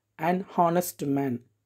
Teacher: the actual pronunciation the H is silent but the pronunciation the word begin with a Vel sound so